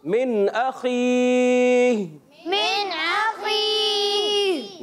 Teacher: नून साकिन के जब इजहार आते हैं तो इजहार हल्की होता है, मीम साकिन के इजहार आते हैं तो इजहार शफवी होता है, तो यहाँ इजहार हल्की होगा और नून को खूब वाजे करना है